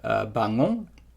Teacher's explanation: The nasal vowel comes after the nasal consonant, and then it stops. It's not on the previous one. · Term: progressive nasal assimilation